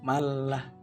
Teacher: nun mati bertemu lam dia itu seperti diwasalkan atau dilangsungkan ke huruf lainnya tanpa seolah-olah tanpa membaca Nun matinya ini jadi malah seolah di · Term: idgham bilagunnah